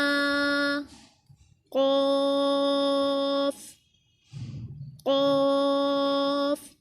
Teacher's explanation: क़ाफ़ हरूफ मुस्तालिया में से है, इसको हमने पुर पढ़ना है।